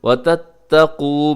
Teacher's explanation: وتتقوا میں قاف موٹا رکھیے گا، لمبا بھی کیجیے گا، آخر میں واو مدہ ہے۔